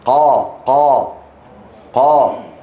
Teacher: انظروا إلى القاف مستعلية لكن الصوت من الأمام ليس محصورا، قا، فهي مستعلية منفتحة والحلق فيه تضيق هنا واللسان مرتفع.